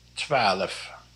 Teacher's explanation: You can also say 12, almost like there's an extra vowel in between the L and the F.